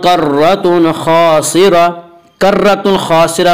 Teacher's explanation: या रा मुशद्दद के ऊपर ज़बर है इससे रा को पुर पढ़ेंगे।